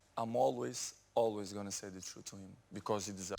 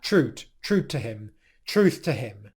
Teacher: In the word truth, where the th sound could come out in between your teeth, truth, he pronounces this as a clear T sound